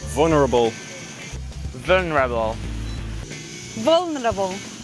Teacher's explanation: this second syllable is just a schwa and sometimes it practically disappears